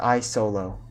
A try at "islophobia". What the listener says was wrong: No, I think it's islo, not isolo.